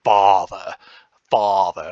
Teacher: if you're a little bit like Hermione Granger and you say father father it's definitely a back vowel